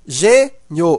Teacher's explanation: veja que esse I ele é pronunciado fraco Ele está ao lado de uma vogal e ele tem um som de i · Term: semivogal